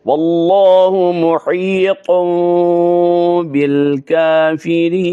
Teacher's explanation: محیطن کی نون جو ہے وہ میم میں بدل جائے گی با کی وجہ سے، تو غنہ اخفا بھی ہوگا اور ساتھ جو ہے اقلاب بھی ہوگا.